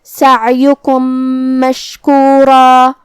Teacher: ہم عین کو حلق کے درمیان والے حصے سے پڑھیں گے اور اسے ظاہر کریں گے · آخری میں میم ساکن ہے، پھر حرف المیم ہے کلمت مشکورہ میں، یہاں ادغام متماثلین صغیر ہوا تو ہم پہلے میم کو دوسرے میم میں ملا کے ایک ہی میم پڑھیں گے غنہ اور تشدید کے ساتھ